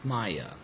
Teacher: it is actually the second syllable which is stressed